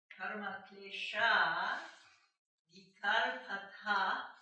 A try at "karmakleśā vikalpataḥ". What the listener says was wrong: Yes, if you say "ta ha", you ruin the meter.